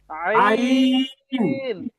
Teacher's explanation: হলকের মধ্যখান হইতে উচ্চারিত হয় আইন, একটু শক্তি দিয়ে।